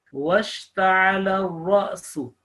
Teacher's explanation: this alif with a scoon, and it acts like a jerking sound, Hamza